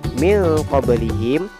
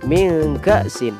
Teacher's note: ikhfa abad berarti ikhfa yang jauh sengaunya. Ikhfa ini terjadi apabila ada nun sukun atau tanwin bertemu dengan huruf qaf atau kaf.